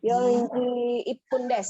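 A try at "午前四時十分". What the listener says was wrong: Bukan ipung. Gozeng yoji.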